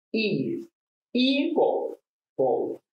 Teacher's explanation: The stress is in the first syllable.